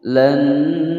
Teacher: nun sukun bertemu dengan nun, ini adalah hukum bacaan idgham bi gunnah masuk dengan dengung